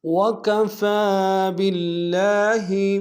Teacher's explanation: رسولا، وقت میں رسولا، وکفى باللہ، وکفا میں فا کے اوپر کھڑا زبر ایک الف نار میں کھینچیں گے